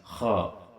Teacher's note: Nah ini kho makhrajnya berada di ujung tenggorokan dekat lisan